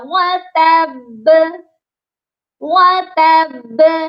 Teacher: پہلے ہم نے با کو تا کے ساتھ سختی سے ملانا ہے، تب، پھر با کو دوبارہ پڑھنا ہے، ب، اس طرح یہ سختی والا قلقلہ ہوگا، وَتَب، وَتَب۔